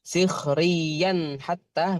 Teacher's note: Hati-hati terbaca dengung ya Mandi itu izhar, izhar itu dibaca jelas tanpa didengungkan